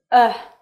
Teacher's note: Your tongue is in the middle part of your mouth. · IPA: /ʌ/